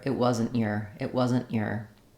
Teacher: the air stops for the unreleased tea · wasn't will have an unreleased T because the next word is a consonant sound